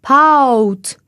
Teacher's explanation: On va commencer avec « A » et on va finir presque avec « ou ». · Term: diphtongues